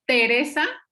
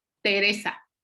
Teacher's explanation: si ustedes pronuncian la palabra Teresa ustedes ven como el el diente medio muerde a la lengua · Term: dental